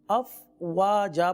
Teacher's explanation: آگے افواجا، تو یہاں پر واو کی ادائیگی کا خاص خیال رکھنا ہے، افواجا پڑھنا ہے، یعنی واو کو دونوں ہونٹوں کی گولائی سے ادا کرنا ہے